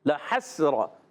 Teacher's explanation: रा पर ज़बर आने की वजह से रा हो जाएगा पुर